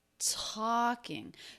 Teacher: So he's really stressing the word talking here. And when we stress a word, we're really only talking about the stressed syllable in that word, and that's the first syllable. Talking. So the unstressed syllable is still unstressed, even though this word is stressed.